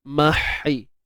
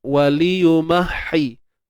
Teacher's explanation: Untuk huruf ha pedas ni di bahagian tengah kerongkong kita kan, kita sempitkan. Mahi. Kalau kita tak sempit, nanti dia jadi bunyi yang kita kata kurang baik lah, kurang tepat begitu.